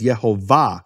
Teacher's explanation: the emphasis of the word is in the final syllable it's marked that way in all Hebrew manuscripts with vowels no